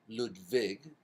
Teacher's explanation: we can use the German pronunciation ludvig the W becomes a V